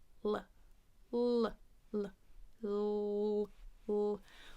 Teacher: This is the light or clear L that starts a syllable or word. So the tongue is up behind the teeth, right at the edge of the hard palate. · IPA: /l/